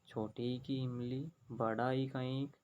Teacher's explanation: स्वर का उच्चारण करते हैं, बोलते हैं, तो हमारे होठ गोल नहीं होते हैं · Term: अवर्तमुखी स्वर